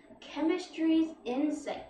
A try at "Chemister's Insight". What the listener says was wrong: Chemisters. Insight, not chemistries.